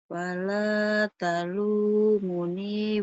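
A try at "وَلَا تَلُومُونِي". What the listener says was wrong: Banyak yang panjangnya tuh.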